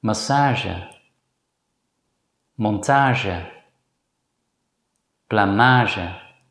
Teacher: They're simply pronounced the same as in English. In words borrowed from French, the letter G is usually pronounced as a voiced consonant J. This consonant also appears in English.